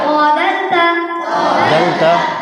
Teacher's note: 11 নম্বর মাখরাজ জিবের আগা এবং সামনের উপরে দুই দাঁতের গোড়ার সাথে লাগিয়ে উচ্চারিত হয়